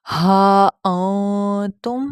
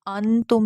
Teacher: ایسے لگے گا جیسے غنہ کریں، لیکن غنہ نہیں ہوگا، نون کی آواز کو آپ پارشلی ایسے تھوڑا سا چھپا کے پڑھیں گے تو وہ ایسے لگے گا ناک سے ادا ہو رہی ہے۔